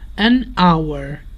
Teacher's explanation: we say an hour because here the h is silent and the word starts with a vowel sound. An hour. Remember the article depends on the sound that comes next.